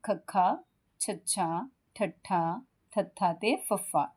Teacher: जिन्ना व्यंजना दे उच्चारण समय हवा मुंह विचो फ्राटे वांग बाहर निकलदी है उनु महाप्राण व्यंजन